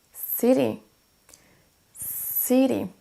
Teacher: Pour dire une ville, on ne dira pas city, mais city. On accentue sur la première syllabe.